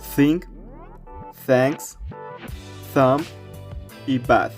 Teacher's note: Primero, tienes que colocar la punta de la lengua entre los dientes superiores e inferiores o justo detrás de los dientes superiores. Deja que el aire pase a través de la pequeña abertura entre la lengua y los dientes sin usar las cuerdas vocales. Recuerda que las cuerdas vocales no vibran cuando produces este sonido. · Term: sonido TH